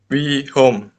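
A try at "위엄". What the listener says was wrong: Ya, wiom. Haknya tidak dibaca, wiom. Wiom ya.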